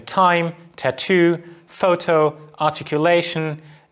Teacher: bit farther back in your mouth remember the alveolar ridge so we can also produce closure at the alveolar ridge where the blade of your tongue presses against the alveolar ridge